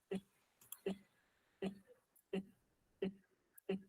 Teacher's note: Escutaram I porque o F1 é baixo, e o F2 e o F3 são altos, igualzinho de um I. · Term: Lateral palatal